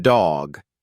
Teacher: With the voiced ones, like dog, you'll feel a vibration when you say the D. Put your fingers lightly on your throat as you say it to check for the buzz.